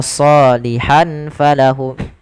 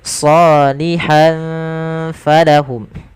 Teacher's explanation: Kemudian pada lafal ham falahum ada tanwin pada lafal huruf ha yang bertemu dengan huruf fa, maka samarkan, maka ini kita hukumi dengan bacaan ikhfa dan samarkan tanwinnya ke huruf fa. Maka tidak dibaca salihan falahum tapi salihan falahum.